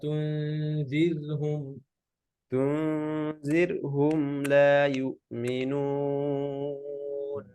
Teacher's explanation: র সুকুন, র পাতলা, র লাইট